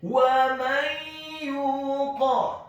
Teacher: Wa may yuqa, kemudian huruf ya-nya dibaca tipis tarqiq dhammah 2 harokat karena setelahnya ada huruf wawu sukun, dan huruf qaf-nya dibaca tafkhim tebal fathah 1 harokat.